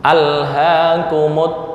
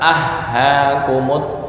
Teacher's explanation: lam kan di ujung lidah. Terus ha makhrajnya paling bawah dekat ke dada. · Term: idgham mutaba'idzain